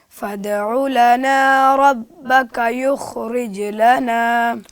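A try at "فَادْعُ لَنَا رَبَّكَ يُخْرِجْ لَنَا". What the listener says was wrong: जी आपकी अदायगी में पहले मुझे कलकला फ़ील हुआ, मगर अब थोड़ा कम हुआ, अब उसको और बेहतर करें। युखरिज लना,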